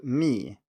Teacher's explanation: the falling tone is five one so we start at the very highest and goes to the very bottom